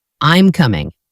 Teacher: Are you coming? In a statement, it goes down.